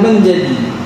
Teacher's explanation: Perkataan menjadi merupakan contoh bagi vokal e purpet dan merupakan contoh bahagian tengah